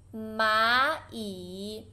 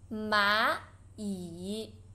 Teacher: there's two third tones. You should pronounce the first one to second tone.